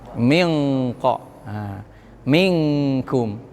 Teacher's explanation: Ujung lidah nggak bisa nempel ke kop dan kap, nggak bisa. Tapi sifatnya nun masih ada. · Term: eng